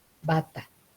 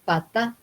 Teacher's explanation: en bata hay vibración de las cuerdas vocales cuando digo pata no hay vibración de las cuerdas vocales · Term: sonora